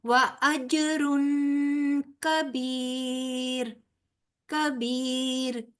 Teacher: तनवीन के बाद आगे काफ आ रहा है जो हरूफ हल्की में से नहीं है लिहाजा यहां पर भी इफा यानी के गुन्ना किया जाएगा